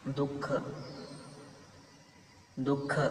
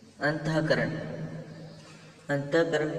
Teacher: विसर्गाचा उच्चार हा त्याच्या मागील स्वरा मागोमाग हकार युक्त होतो